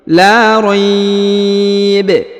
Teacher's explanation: Kalau kita berhenti di sini ya, huruf la dipanjangkan 2 harokat karena di depannya terdapat alif. Kemudian huruf ro dipanjangkan boleh 2, boleh 4, boleh 6 ya. Karena di depan huruf ro terdapat ya sukun atau ya mati sebelum huruf pemberhentiannya.